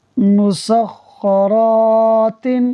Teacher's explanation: اس کے بعد را پر زبر ہے اور اس کے ساتھ پھر الف مدہ بھی ہو رہا ہے، تو اس لیے را کو کھینچیں گے بھی اور پر بھی پڑھیں گے